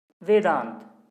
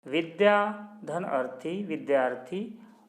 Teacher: वेद में अ और अंत में पहला वर्ण अ है तो अ मिलके आ हुआ।